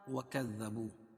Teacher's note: دال پر تشدید ہے، اس کو سختی کے ساتھ پڑھیں گے